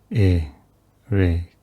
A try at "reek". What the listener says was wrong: Kind of went high when you did reek.